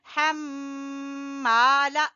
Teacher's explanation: मीम मुशद्दद का गुन्ना और अलिफ मद्दा